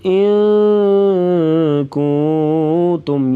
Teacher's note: حَرْثِكُمْ إِن كُنتُمْ یہاں پر 2 غنّے ہیں، اخفا مع الغنہ یعنی ناک میں آواز چھپا کر غنہ کرنا. ان کنتم تم پہ غنہ نہیں کریں گے.